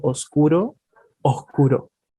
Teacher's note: muy particular del español chileno es el sonido de la s cuando viene la s y después viene una consonante por ejemplo en la palabra oscuro solemos aspirar la s